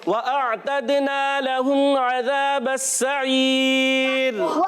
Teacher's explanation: वाव की अदायगी होठों की गोलाई से